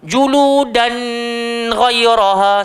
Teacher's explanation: tanwin bertemu ghain, izhar, jangan kita pergi dengung pula. Juludan ghayyaraha, salah, so dia kena izhar, terang.